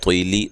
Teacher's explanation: طوا کو موٹا، لام کو باریک پڑھنا ہے